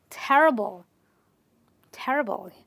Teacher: We stress on the syllable just before the IBLE.